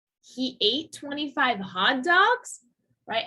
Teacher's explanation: Again, a rise in the last word. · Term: rise in intonation